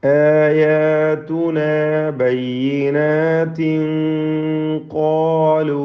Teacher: ബയ്യിനാതിൻ തൻവീനിനെ ഇഖ്ഫാ ഹഖീഖി നൽകി മറച്ച് മണിച്ചോദണം. മണിക്കുമ്പോൾ ശേഷം ഖാഫാണ് വന്നിട്ടുള്ളത് എന്നതിനാൽ തൻവീനിലും തഫ്ഖീം ഉണ്ടായിരിക്കണം, തടിപ്പിച്ചുകൊണ്ടുള്ള ഒരു മണിക്കൽ.